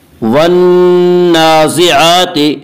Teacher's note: والنازعات نون مشدد پہ غنہ ہوگا، غنہ کی مقدار 1 الف ہے۔ والنازعات نون کے اوپر کھڑا زبر ہے، کھڑا زبر کو 1 الف کے برابر کھینچ کر پڑھیں گے۔